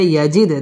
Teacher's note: দাল কলকলার হরফ ধাক্কা দিয়ে পড়তে হবে